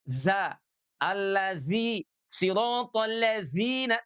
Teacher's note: Karena huruf zal punya sifat jahr. Kebalikan daripada hamas. Kalau hamas mengalir nafas, kalau jahr dia tidak ada nafas, ya. Jadi dia za, allazi, siratal ladzina, tidak zina, tapi zina.